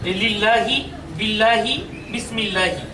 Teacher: এই বারিকের সংজ্ঞাটা হচ্ছে যে আল্লাহ শব্দের দ্বিতীয় নামের আগে যদি জের থাকে, তাহলে আল্লাহ শব্দের এই দ্বিতীয় নামের উপর যে খাড়া জবরটা আছে, সেই খাড়া জবরটা হবে তখন আকারের অ্যাকশনটা হবে তখন, অর্থাৎ লাম খাড়া জবর লা হবে। লাম খাড়া জবর লা উচ্চারণ করাটাই হচ্ছে পাতলা করে উচ্চারণ করা তথা বারিক উচ্চারণ করা